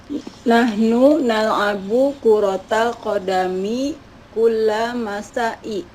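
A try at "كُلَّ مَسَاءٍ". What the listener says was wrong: Masain pakai tanwin ya. Nahnu nal'abu kuratal qadami kullal masain ya, kulla masain.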